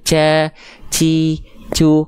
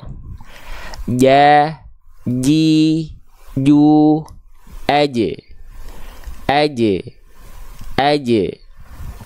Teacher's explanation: Tengah lidah kita sentuhkan ke langit-langit, nempel nih. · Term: huruf jim